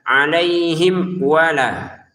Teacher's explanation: Di sini mim sukun bertemu waw kita baca dengan jelas